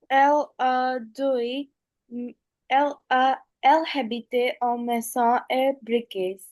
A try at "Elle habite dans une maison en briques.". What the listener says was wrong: Okay, no, we don't pronounce the H, right? It's silent. Elle habite dans une maison en briques.